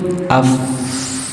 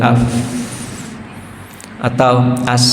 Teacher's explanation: ketika dia sukun af masih ada terus jalan gitu suaranya